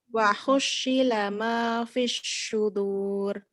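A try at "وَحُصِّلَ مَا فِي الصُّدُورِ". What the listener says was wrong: Belum pas masih. Belum pas ya. Itu lebih ke titik 3 itu. Kalau ada pastinya, ada menyebarnya. Ngowosnya itu lebih ke sin titik 3. Shot itu enggak ngowos.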